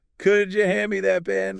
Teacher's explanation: Could you? Merges into that softer kuja sound.